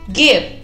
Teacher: hay que pronunciar muy bien la B labial, mordiéndonos la mitad de los labios de abajo